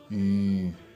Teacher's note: the air goes through nose and sounds produced there are called nasal sounds